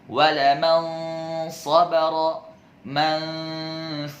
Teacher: ada gunnahnya, akan tetapi tidak begitu sempurna sekali, tidak seperti paling sempurna. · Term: kamilah